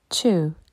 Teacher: on ne prononce pas le W